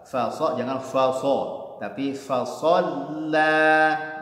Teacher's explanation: Fa-nya tipis, so-nya tebal.